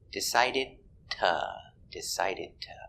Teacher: decided ends with a stop d decided stop the air and continue link the sound with the t